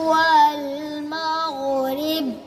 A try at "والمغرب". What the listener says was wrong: बा पर कलकला करो। वल मग़रिब